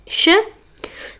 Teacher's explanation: शलगम वाला श इसका उच्चारण स्थान तालू है